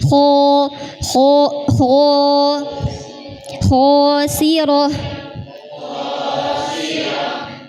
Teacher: Kalau pangkal lidahnya sudah naik bunyinya ko kho.